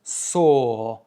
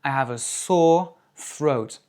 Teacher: ça se prononce sore, avec juste un O long